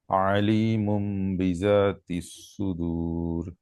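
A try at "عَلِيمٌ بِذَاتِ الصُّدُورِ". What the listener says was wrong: আলিমুম বিযাতিস সুদূর। রাটা নরম করে উচ্চারণ করতে হবে। রা, মানে জিব্বা আগা, সামনের উপরের দুই দাঁতের আগার সাথে লাগাইয়া রা।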